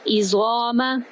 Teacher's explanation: زوا کو ہم ایک الف کے برابر لمبا بھی کریں گے اور پر بھی کریں گے